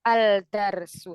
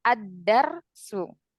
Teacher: Jadi langsung kita masuk ke huruf dalnya. Lamnya di sini tidak dibaca ya. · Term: idgham syamsiyah